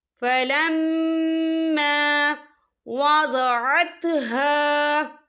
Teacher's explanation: یہاں میم مشدد ہے تو یہاں پر غنہ ہوگا